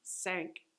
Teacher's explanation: With the S sound, sank, your tongue is behind your teeth